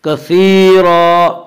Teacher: کثیرا یا مدہ وہ یا جو ساکن ہو اور اس سے پہلے زیر ہو، یا مدہ کو ایک الف کے برابر کھینچ کر پڑھیں گے